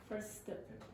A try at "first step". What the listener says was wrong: Again, elision of what? No, of the T. Of the T. The T completely disappeared.